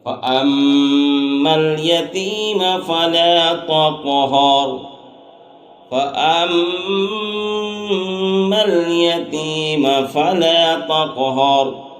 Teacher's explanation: اما میں غنہ ہو رہا ہے کہ میم مشدد ہے